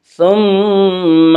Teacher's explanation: ثم میم مشدد غنہ ہوگا، غنہ کی مقدار 1 الف ہے